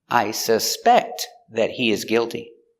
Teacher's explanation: the verb i suspect put the stress on the second syllable